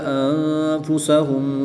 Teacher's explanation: نون ساکن کے بعد فا حروف اخفا میں سے ہے تو یہاں پر اخفا ہوگا یعنی غنہ زمانی کر کے پڑھیں گے۔